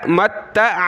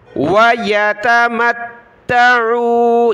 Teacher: میم کو تا کے ساتھ ملایا, تا کے اوپر تشدید ہے, اس کو ہم نے سختی کے ساتھ پڑھنا ہے